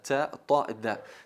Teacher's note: el ápice de la lengua como vamos a ver en esta siguiente imagen apoyándolo sobre la raíz de los incisivos superiores